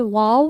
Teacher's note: ہونٹ با اور میم کی طرح پورے آپس میں نہیں مل جاتے بلکہ گول ہو جاتے ہیں